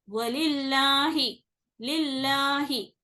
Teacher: जेर आने की वजह से ये लाम बारीक पढ़ा जाता